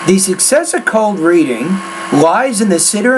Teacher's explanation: when you get to the end of the sentence that's where my tone drops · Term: thought groups